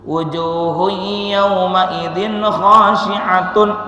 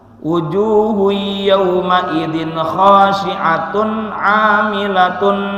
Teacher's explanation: Ingat saja izhar itu jelas. Apa yang jelasnya? Bunyi n pada dhammah tain khasyi'atun. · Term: izhar halqi